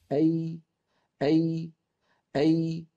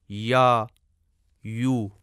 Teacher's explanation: یا غیر مدیہ بھی درمیان زبان اور درمیان تالو سے خارج ہوتی ہے، اور ملاحظہ کریں کہ اس میں زبان کا درمیانی حصہ اوپر کو اٹھتا ہے اور اس کا مخرج اس جگہ تنگ ہو جاتا ہے جہاں ہم چھوٹا سا سفید نقطہ دیکھ رہے ہیں، جیسے یا، یو۔